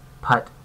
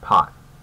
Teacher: my uh as in putt is very close to my a as in pot